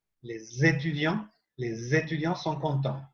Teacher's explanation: cuando termina la palabra con S, yo la uno como si fuera una Z francesa. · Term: ligadura